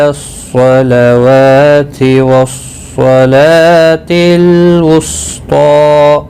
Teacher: صاد مستعلیہ ہے، پر پڑھا جائے گا۔